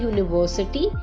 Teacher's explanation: यूरोपियन में आवाज जो साउंड है वो य की आ रही है, यूनिवर्सिटी में यू की साउंड आ रही है